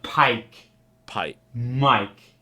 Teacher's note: Go down in pitch at the end of the word. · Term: monotone New York